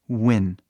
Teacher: Começa fechado de U e aí abre rápido.